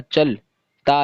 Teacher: کے، لام ساکن ہو جائے گا، کیا ہوا چل، تا الف، تا کھینچ کر پڑھا جائے گا کیونکہ تا کے بعد میں الف آ گیا